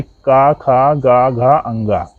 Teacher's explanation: तो का वर्ग का उच्चारण स्थान कंठ, यानी का, खा, गा, घा, अंगा। इन 5 वर्णों का उच्चारण स्थान कंठ होगा।